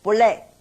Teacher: If after 不, another word is a fourth tone also, that 不 change to second tone.